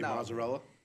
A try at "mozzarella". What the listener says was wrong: Where's the U in there? Why do you say mozzarella?